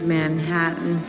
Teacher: she doesn't quite pronounce the t fully she uses a glottal stop